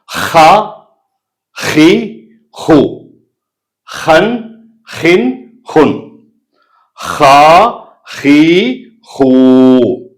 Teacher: நடுத்தொண்டையிலிருந்து வரக்கூடியது ஹா, கைனு